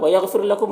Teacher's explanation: غین حروف مستعلیہ میں سے پر پڑھیں گے، را کو باریک پڑھیں گے تو، اور یہاں پر وقف کریں گے تو میم کا سکون ہی رہے گا، تو اس طرح سے پڑھیں گے۔